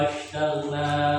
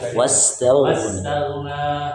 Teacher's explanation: Bukan pakai shin, pakai sin.